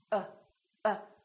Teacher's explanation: my lips are neutral uh they're not doing very much and my tongue is also neutral in the back uh uh everything is relaxed there's hardly any movement in my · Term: neutral sound